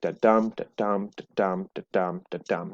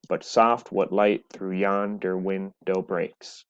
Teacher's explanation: an unstressed syllable followed by a stressed syllable it's on something like the dump dump dump dump the dump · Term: iambic pentameter